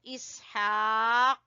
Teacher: अगर आप वक्फ करते हैं तो इसहाक, काफ के ऊपर आपने कलकला करना है